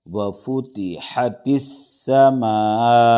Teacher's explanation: مد متصل ہے، حرف مدہ کے بعد حمزہ اسی کلمے میں ہے تو 5 الف کے برابر اس کو کھینچ کے پڑھیں گے